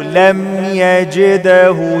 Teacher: الدال ساكنة مقلقلة ما قولش يجده خطأ